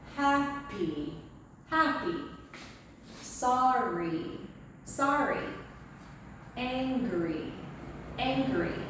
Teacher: at the end of two syllable words it's going to sound like a long e